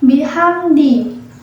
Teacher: Terdapat lafaz bihamdi, yakni hukum bacaan idhar syafawi, disebabkan karena mim sukun bertemu dengan huruf dal. Cara membacanya, mimnya dibaca dengan jelas